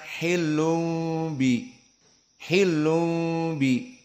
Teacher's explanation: Terjadi pertukaran antara nun tanwin, di mana makhraj nun tanwin na ni nu an in un. Maka dia nun tanwin dari makhrajnya asalnya lisan menjadi makhraj mim dikarenakan bertemu dengan ba. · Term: iklab